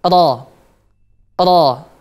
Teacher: ujung lidah mengarah ke punggung sedikit kemudian terangkat ke langit-langit